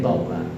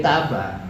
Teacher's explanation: A dibaca tafkhim kalau dia pada konteks toba, tapi A akan dibaca tarkik dalam konteks taba.